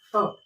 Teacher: बाकायदा ध्यान रखें जब भी उच्चारण स्थान है तो पहली बार जो जीभ जहाँ टकराती है, जैसे कि आप बोलोगे त, आप फिर तब बोलोगे तो तब में स्पष्ट रूप से आपके दांतों में जीभ चली गई है, दांतों से आगे टकराई है।